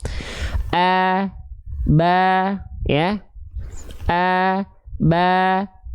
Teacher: kalau vokal A kan tipis, fathah tipis, maka dia dilafalkan buka mulutnya sambil seolah tersenyum